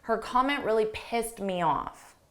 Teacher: you almost don't hear that T. So you can't really distinguish that it's in the past simple.